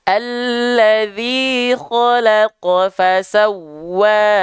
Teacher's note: Wawnya panjang, sudah kita bahas tadi, ya. Wawnya panjang 2 harokat.